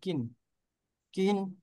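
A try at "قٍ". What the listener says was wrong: হ্যাঁ, একরকম হয়ে গেল কিন্তু। একটা হইলো কুইন, আর একটা হলো কিন। হলকের শেষে চাপ দিয়ে কুইন, কুই, আর একটা হলো কি।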